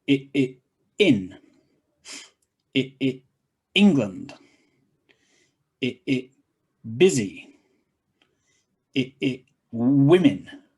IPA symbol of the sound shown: ɪ